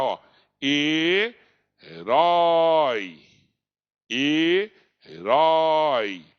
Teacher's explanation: tenho que pronunciar ó e herói e herói qual que é prolonguei mais o ó tá ó é vogal e o i semivogal · começou com maior que a vogal terminou na menor que é semivogal · Então, o O é vogal e o I, semivogal. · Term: ditongo decrescente, Ditongo decrescente